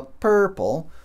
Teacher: aquele R é tão forte que ele apaga o vogal que vem antes